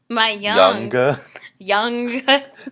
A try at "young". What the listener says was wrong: Didn't realize you pronounced the G. There's no G in 2.